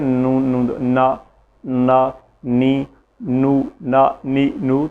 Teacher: زبان کی نوک تالو سے، اوپر تالو سے یہ نوک لگتی ہے